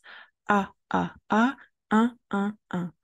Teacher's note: A, A, A. Then you will keep the mouth just in the same position and you will add a nasalization and then you will blow the air, you will try to make the sound and it should sound like this. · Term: le son 1